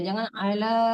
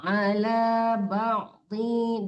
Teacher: Kepanjangan ini Bu. La-nya dua harkat aja ya, dua ketukan aja. Jangan ala kepanjangan kalau begitu ya.